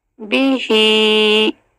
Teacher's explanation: ما فاخرج بیہی، ہا کو کھڑا زیر ہے، ہم نے حرکات دیکھ لی ہیں، کھڑا زبر، کھڑا زیر، الٹا پیش، دو حرکت. بی با کی سنگل حرکت اور ہا کی ڈبل